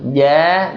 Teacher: Makhrajnya dari lidah bagian tengah menyentuh langit-langit.